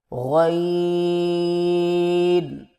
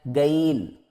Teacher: زبان کی جڑ کو تالو کی طرف بلند کرتے ہوئے موٹی آواز میں پڑھیں